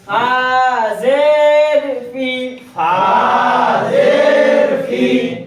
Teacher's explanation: নিচে ঠোঁটের পেট আর সামনের উপরে দুই দাঁতের আগার সঙ্গে লাগাইয়া